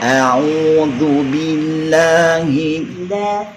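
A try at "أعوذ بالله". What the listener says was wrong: Belum. Buka sedikit makanya mulutnya. Billah. Ah, itu dibuka sedikit.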